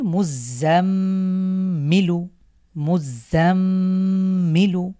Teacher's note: এখানে যেহেতু মিমের উপরে তাসদিদ হয়েছে তাহলে আমরা এই মিমটাকে গুন্না করে পড়বো